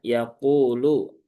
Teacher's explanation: dia huruf ya tipis ya di tengah lidah. Di ayya dipastikan yang berperan adalah tengah lidahnya.